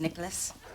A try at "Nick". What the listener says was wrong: Nick. You said Nicholas, 3 syllables. It's Nick with 1. Emphasis on the N.